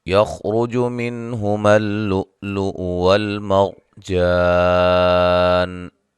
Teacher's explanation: خا کو موٹا ادا کریں گے اور را کو موٹا ادا کریں گے